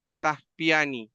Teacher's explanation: esas dos ta se convierten en un solo ta.